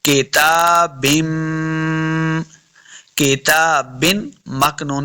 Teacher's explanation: किताबिम, देखिए ता के ऊपर खड़ी ज़बर है, इसको लम्हा करेंगे। बिम, बा के नीचे दो ज़ेर की तनवीन है, आगे मीम के साथ मिलाना है क्योंकि मीम मुशद्दद है, तो गुना करेंगे।